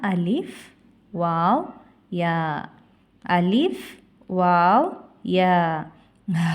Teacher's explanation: அலிப் வாவ் யா வாயின் காலியான இடத்திலிருந்து ஒளிக்க பெறுகின்றன